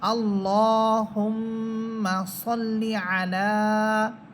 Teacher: এখানে লাম হরফের উপরে আছে খারা সবর, এই জন্য এখানে একালিপ টেনে পড়তে হবে।